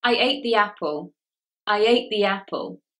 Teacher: Can you hear there is that little y sound in the middle? I ate the y apple.